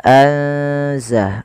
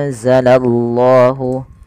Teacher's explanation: Kemudian pada lafal anzala ada nun sukun ditandai dengan warna nun yang berwarna hijau dan tidak berharokat ini bertemu dengan salah satu huruf ikhfa yaitu huruf zai. Maka cara membacanya yaitu memasukkan nunnya atau menyamarkan nunnya kepada huruf zai. Ya, anza langsung kepada makhraj daripada huruf zai.